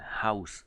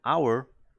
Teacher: si ustedes pronuncian House tienen el sonido este suave de la jota inicial House pero Hour la H no se pronuncia